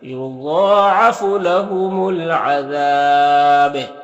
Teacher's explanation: बा का पेश सुकून से बदल जाएगा, तो फिर यहाँ पर बा में कलकला होगा, और फिर मद्दे आरिज वक्फी भी होगा, तो इस तरह से पढ़ेंगे।